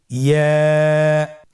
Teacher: ইয়া উচ্চারিত হয় জিহ্বার মধ্যখান তার বরাবর উপরে তালুর সঙ্গে লাগিয়ে উচ্চারিত হয়। আমরা জিহ্বার মধ্যখানটাকে উপরে তালুর সঙ্গে লাগিয়ে উচ্চারণ করি ইয়া।